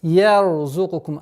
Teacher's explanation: С мягкого я, звука я, уходим на твердый ра. Ярзукукум, а не ярзукум.